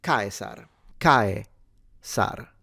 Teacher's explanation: the C in the classical period was always pronounced pretty much like a K and not like a Ch, particularly when followed by certain sounds like E and E, which is a characteristic of a much more modern ecclesiastical Latin, which is an Italianate form of pronunciation. · So the S is a S sound, so not vocalized into a Z.